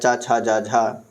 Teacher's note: च वर्ग जो होता है च छ ज झ य यह होता है तालव्य